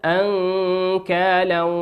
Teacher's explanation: نون ساكنة في كلمة أنكالا أتى بعدها حرف الكاف والكاف من حروف الإخفاء